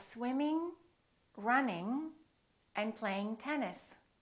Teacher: don't release your tongue and don't just produce the N in the front. It's a sound in the back.